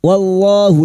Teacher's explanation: Wallahu lam jalalah yang didahului fathah kita baca tafkhim